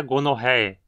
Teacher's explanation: Aqui a penúltima sílaba tem o ditongo OE, pronunciado como E